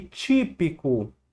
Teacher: A palavrinha aqui, típico, a sílaba tônica é a antepenúltima. Então aqui, ó, é uma proparoxítona.